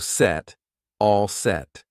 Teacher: notice I don't push out that T